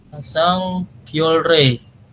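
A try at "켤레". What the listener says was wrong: kyole. Nah, kyole bukan kyolre ya. Ingat-ingat ada real di akhir, ketemu real di atas, maka keduanya berbunyi L, kyole, seperti itu.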